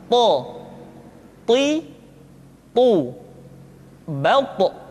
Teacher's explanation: ketika to diucapkan, suara kita terdengar menebal.